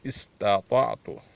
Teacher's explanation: استطعت پہلا تا پتلا, دوسرا موٹا پڑھنا پڑے گا.